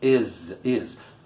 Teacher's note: It is, aqui tem som de Z, porque após uma vogal, o S tem som de Z, porque a vogal é vozeada, ela vibra na garganta, ela transforma o S em Z. Is.